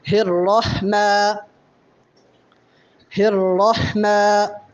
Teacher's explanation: میم پہ چونکہ کھڑا زبر ہے اس لیے میم کو بھی ایک الف کے برابر لمبا کریں گے